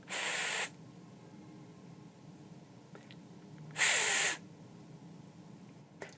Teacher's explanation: The tip of my tongue is pressed against the back of my upper teeth. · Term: final consonant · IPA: /s/